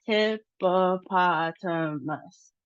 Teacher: our emphasis is on the third syllable, and then we have a low emphasis on the first syllable, and that we have short sounds. · we see that our emphasis is on the third syllable